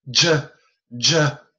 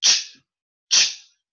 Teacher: A J is a voiced CH.